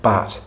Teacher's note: bat, as I would pronounce it in my accent, has a more open tongue position. The tongue is lower in the mouth and it's in a relatively frontal position.